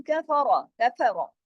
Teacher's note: اس میں را موٹا پڑھا جائے گا کہ را کنڈیشنل ہیوی ہے، جب بھی را پہ زبر یا پیش ہو تو را موٹا پڑھا جاتا ہے۔